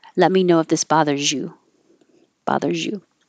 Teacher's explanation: the Z and the Y can make a jeh